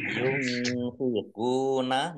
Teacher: nun sukun bertemu dengan huruf fa, bacaan ikhfa, dibaca samar-samar